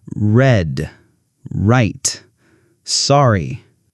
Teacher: For the R sound, your tongue doesn't touch anything. It's more relaxed and curved.